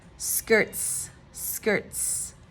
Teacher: you almost can get rid of the T completely and just add Z